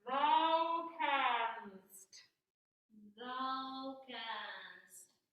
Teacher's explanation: the k of canst is really forward